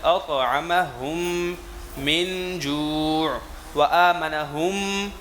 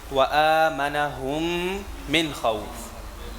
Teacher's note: دونوں میم کو ایک کر دیں گے. ایک کرنے کی وجہ سے اب یہاں پہ غنہ ہو جائے گا